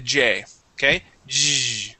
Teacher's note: my tongue is almost touching the top part of my mouth. Okay, it is touching the sides of my teeth. Okay, but it sits very high in my mouth.